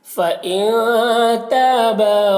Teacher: فإن نون میں اخفا ہوگا، نون کی آواز کو ناک میں چھپا کر پڑھیں گے۔ تا اور با دونوں میں الف مدہ ہے، ایک الف کے برابر کھینچ کر پڑھیں گے۔